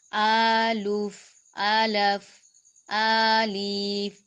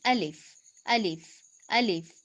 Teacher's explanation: ना तो इसको लंबा करना है, ना ही लाम के नीचे जेर की बजाय जबर पड़नी है।